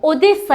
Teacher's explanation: Vurğusuz hecada a kimi tələffüz olundu.